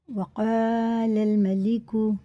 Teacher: الف سے پہلے زبر ہے تو حرف مدہ ہے، ایک الف کے برابر کھینچ کے پڑھیں گے